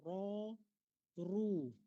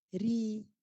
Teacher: Ra dengan ru bagi depan, tebal. Ri bagi bawah, dia jadi nipis.